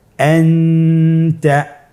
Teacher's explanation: নুন সাকিন অথবা তানবিনের পরে ইকফার 15টি হরফের যে কোনো একটি হরফ আসলে তাহলে নুন সাকিন তানবিনকে নাকের ভিতরে লুকিয়ে গুণনার সহিত পড়তে হবে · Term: ইখফা